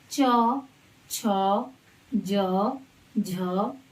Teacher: इसमें हमारे तालू से ध्वनि आएगी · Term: च वर्ग